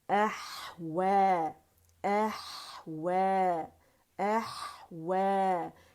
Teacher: علی مکسورہ جو ہے واو کی آواز کو کھینچ رہے 2 کاؤنٹ کے لیے، اوپر مد طبیعی یہاں پہ بن رہی ہے، تو ہم بنائیں گے، ٹھیک ہے، کیونکہ ہم سٹاپ کر رہے ہیں، مد طبیعی بن رہی ہے اور مد اصلی ہے، تو روانی اور وقف کی صورت میں 2 کاؤنٹ ہی یہ رہے گی۔